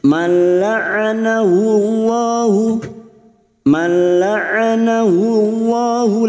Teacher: lam jalalah yang sebelumnya dhammah kita baca tafkim